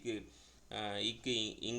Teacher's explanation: அடி நாவோட அடி அன்னத்தில் மோதுறதுனால வர்றது